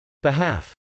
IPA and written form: bɪhˈæf (behalf)